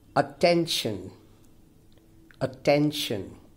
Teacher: now here clearly the stress falls on the second syllable